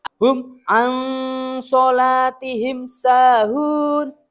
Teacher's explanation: Tidak boleh ada sama sekali dengung-dengungnya, tidak boleh. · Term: Idhar syafawi